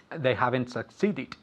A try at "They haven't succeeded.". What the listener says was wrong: Very good.